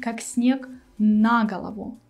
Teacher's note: The stress is on the preposition на. Actually, the word голова here, it's not stressed at all. Sometimes it happens in such sad phrases or idioms when we change the stress.